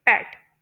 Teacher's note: इन sounds को produce करते हुए पहले एयर फ्लो कंप्लीटली क्लोज हो जाता है, फिर अचानक से उसका सडन रिलीज होता है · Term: प्लॉसिव्स